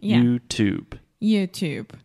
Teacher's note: YouTube is a traditional true T